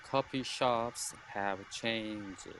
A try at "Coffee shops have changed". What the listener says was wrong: Look, but I didn't hear that little sound at the end. So changed.